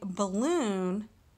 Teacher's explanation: in the word balloon we are putting emphasis in the second syllable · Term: stress